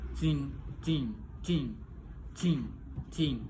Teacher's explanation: place of articulation dental, ujung lidah berada di antara atau menyentuh gigi atas dan bawah. Manner of articulation fricative, voicing voiceless. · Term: voiceless dental fricative